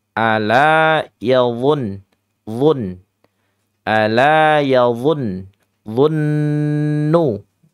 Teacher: do ada yang baca D ya salah ya Ini du du lidahnya yang tengah-tengah diangkat sembari ujung lidahnya itu ditempelkan ke gigi seri atas dan bawah